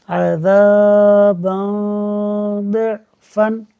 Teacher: دو زبر کی تنوین کے بعد ضاد حروف اخفا میں سے ہے، غنہ ہوگا